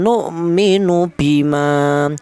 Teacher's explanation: Dimana huruf hamzah ini mati ya, ini dibaca idhar ya, dibaca jelas artinya idhar